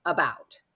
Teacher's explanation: English this schah is at the beginning of words like about it's an A but we say uh about it's an unaccented syllable